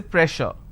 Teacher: Just because I have two s, I can't say press sir, I can't say press sir. So here double s will become sh sound, so I say pressure.